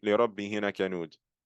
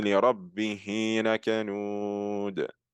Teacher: you're going to elongate the he sound to two haraka. So I'm not going to say لِرَبِّهِ لَكَنُودٌ. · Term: med as-silatu sughra